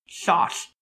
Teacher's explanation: a slushy lisp, in which the alveolar fricatives are realized as lateral fricatives, such as in the word sauce, which is pronounced chosh.